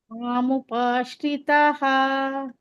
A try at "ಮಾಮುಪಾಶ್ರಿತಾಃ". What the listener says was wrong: ಯಾಕೆ ಶ್ರಿತಹ ಅಂತೀರಾ ಶ್ರಿತಾಹ ದೀರ್ಘ